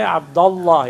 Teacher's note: And alif will be dropped in pronunciation.